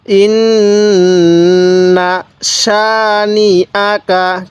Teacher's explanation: আমরা এই নুনের মধ্যে টান দিব না